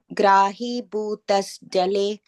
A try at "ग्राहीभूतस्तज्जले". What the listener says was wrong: No, taj jale. There is a word taj, taj jale. No, bhutas. Yeah, bhutas tajjale.